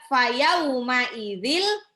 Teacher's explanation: Langsung dilebur aja. Tanwinnya masuk ke lam tanpa ditahan, tanpa didengung sama sekali. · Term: idgham